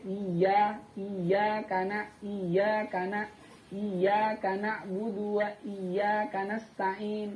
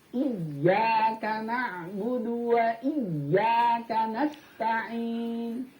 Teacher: karena iya-nya itu bertasydid dan double. Kemudian ditekan.